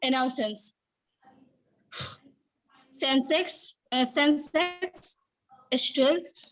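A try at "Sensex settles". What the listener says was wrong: स्टेल्स नहीं लिखा बाबू स्टेल्स नहीं लिखा हुआ है ना।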